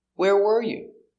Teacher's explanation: The question, the intonation goes down at the end because it's an information question.